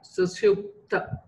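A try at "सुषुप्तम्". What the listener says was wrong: Okay, sushupta is fine, but is there a makara after that? Sushuptam. Oh, so then you can pronounce that ma.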